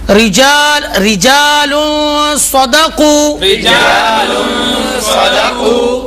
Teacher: اس لفظ میں تنوین کے بعد حرف سواد ہے جو کہ حروف اخفا میں سے، اس لیے یہاں اخفا کا قاعدہ ہوگا، نون کو چھپا کر اور غنہ کر کے پڑھیں گے